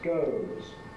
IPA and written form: gəʊz (goes)